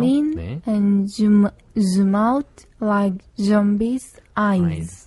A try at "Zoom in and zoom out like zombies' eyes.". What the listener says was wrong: 첫 발음으로 Z가 나올 때 조금 약한 경향이 있는데 Zoom in and zoom out 거기까지만 한번 해볼게요. Z를 길게 한번 읽어보세요. 네, 이렇게 Z 발음을 길게 네, 해주시면 됩니다.